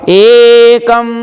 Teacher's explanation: एकम, ए दीर्घ मात्रा, क ह्रस्व मात्रा, अनुस्वार, एकम, एक स्टेज ऊंचा होकर के बोला जाएगा